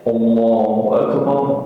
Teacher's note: tipis a-nya istifal ke bawah lidahnya enggak boleh naik ke atas